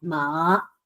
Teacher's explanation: Tense up your whole body, and you have to go from the lowest point of your voice range to the highest point of your voice range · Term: second tone